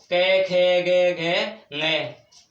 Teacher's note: इनका उच्चारण कंठों से होता है तो इनको कंठे बोलते हैं। कंठों से उच्चारण होता है इनको कंठे बोलते हैं।